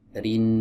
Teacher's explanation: Dialirkan ya suaranya karena di sana ada gunah mutawwalah. ghunah yang dipanjangkan. · huruf nun makhrajnya ada di ujung lidah bertemu dengan gusi